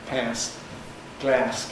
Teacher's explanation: Now, you'll be familiar with this really from American English, because Americans retain the vowel of cat and trap in these words, although it's undergone other changes in American English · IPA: [pæ(ː)s]